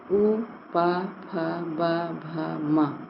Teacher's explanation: इन वर्णों का उच्चारण स्थान क्या होगा, ओष्ठ होगा